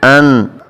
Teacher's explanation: اب یہاں پر اکثر لوگ قلقلہ کر دیتے ہیں، نون کی آواز کو یعنی دوبارہ لاتے ہیں